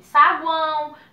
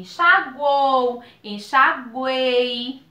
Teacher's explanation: São 3 vogalzinhas que ficam na mesma sílaba, nós chamamos de tritongo.